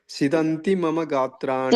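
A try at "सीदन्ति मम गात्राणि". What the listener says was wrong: ಸೀದಂತಿ, ಸಿ ದೀರ್ಘ ಇದೆ ನೋಡಿ.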